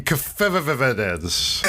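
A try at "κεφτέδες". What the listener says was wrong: It's Keftedes. Yeah, but like the D is more like a TH sound.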